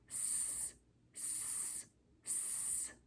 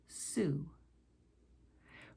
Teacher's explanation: To pronounce the S and Z sounds, you place your tongue very close to the ridge of bone just behind your top front two teeth. And then you blow out, letting the air flow around your tongue and out the sides. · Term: S sound